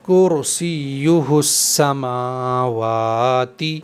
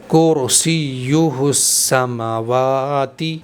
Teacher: میم کے اوپر اور واو کے اوپر دونوں کے اوپر کھڑا زبر ہے اور کھڑا زبر کو ایک الف کے برابر کھینچ کر پڑھنا چاہیے، تو دونوں کو برابر برابر کھینچیں گے، ایسا نہ ہو کہ ایک زیادہ کھنچ جائے اور ایک کم کھنچ جائے۔